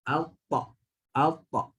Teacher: Hujung lidah, belakang gigi atas ataupun spesifiknya Hujung lidah menyentuh tempat pertemuan gigi dan gusi atas.